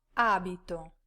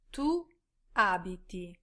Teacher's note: the stress will fall in the beginning of the word for the io, tu, and lei, lui forms. This is most often on the second syllable, but can also be on the first, as with our example verb.